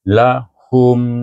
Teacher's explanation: tutup bibir mula moncong lepas tu tutup bibir sebab mim mati